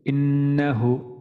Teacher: এখানে নুনের মধ্যে আমাদের ওয়াজিব গুণ আছে, যেহেতু তাজদিদ আছে